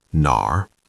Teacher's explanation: Third tone, dip down and up, nar. It has that R pirate sound at the end